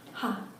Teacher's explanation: the Korean H sound is very subtle compared to the English one and if you compare it with a German one definitely subtle